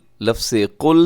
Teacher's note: قاف جو ہے اسے موٹا رکھنا ہے، لام کو باریک رکھنا ہے۔